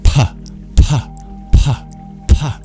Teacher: The PH is not an F, nor is it a P, but it's a breathy sound. It's like if you put a P and an F together.